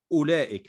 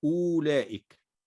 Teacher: أولئك، ستجد أن الواو عليها الصفر المستدير، فلا تنطق الواو، إنما ننطق فقط همزة مضمومة، نقول أولئك لا نقول أولئك.